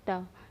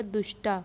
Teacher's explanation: दंती सा का मूर्धन्य सा में परिवर्तन हो जाएगा